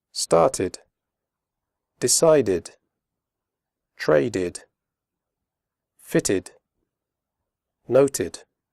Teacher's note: After d and t, the final ed is pronounced id, as in did.